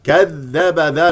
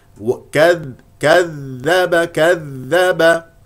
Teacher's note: ذاء مشدده يجري فيها الصوت